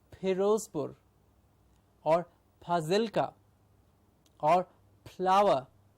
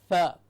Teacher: It's only the lower lip that goes in. The top teeth touch the outer portion of the lower lip to say f, and a continuous airflow out gives you the target sound automatically. · The upper lip has nothing to do with the f sound, so it is not a p.